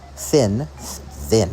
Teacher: They don't vibrate at all. There's no buzz when you say th at the beginning of thin. This is voiced versus voiceless.